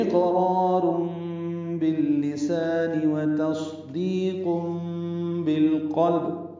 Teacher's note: حمزہ کو قاف سے ملائیں گے، قاف ساکن ہے، اس پہ قلقلہ ہے